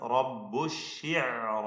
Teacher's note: റാഇനെയും അതിന്റെ ദീർഘാക്ഷരമായ അലിഫിനെയും രണ്ടും തഫ്ഖീം ചെയ്ത് ഉച്ചരിക്കുക